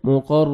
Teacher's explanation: بحل نہیں پڑھنا بہل بہل مقر قاف کو موٹا کر کے پڑھیں گے را مشدد ہے را کو مرزبر ہے را کو موٹا کر کے پڑھنا ہے